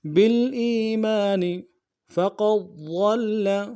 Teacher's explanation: ضاد کو موٹا ادا کرتے ہوئے لام کے ساتھ ملانا ہے ، لام کے اوپر تشدید زور دیں گے، فقد ضل سواء